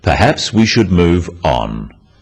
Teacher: perhaps we should move on is phrased as a suggestion but it is said in a firm way with a falling intonation at the end practice with me perhaps we should move on this falling intonation